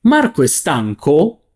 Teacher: To ask it as a yes-no question, you would say Marco è stanco? Is Marco tired? With a rising intonation.